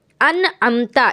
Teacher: جیسے انعمتا، یہاں نون ساکن ہے اور نون ساکن کے بعد جو عین ہے یہ حرف حلقی ہے، تو انعمتا اس نون کو آپ کو ظاہر کر کے پڑھنا ہے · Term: اظہار